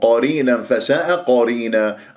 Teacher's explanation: القاف مفخمه مرتبه الثانيه في الكلمتين